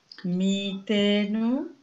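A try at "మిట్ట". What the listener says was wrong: it is it has ottu so you need to emphasize the letter ta mitta mitta the only one letter is different. Okay, this is mittanu, this is mettanu.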